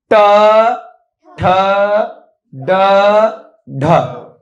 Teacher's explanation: जीभ गोल घूमकर ऊपर टच कर रही है